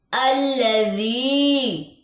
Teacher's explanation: یا مد 2 کاؤنٹس لمبا کریں گے